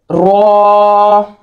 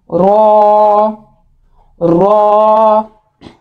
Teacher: रॉ को हम मोटा पढ़ेंगे, यानी जुबान जो वो थोड़ी सी करवट लेगी अंदर को, तो मुंह हमारा गोल होगा और तब ये फिर मोटा रॉ अदा होगा।